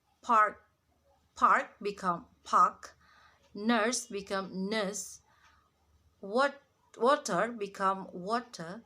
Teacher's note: drop the R when it is before a consonant